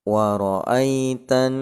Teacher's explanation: Di situ ada huruf nun yang tasydid, maka nun itu harus digunnahkan atau didengungkan, ditahan selama 2 harokah ya. Wa ra'aitanna, jadi harus digunnahkan suara nunnya.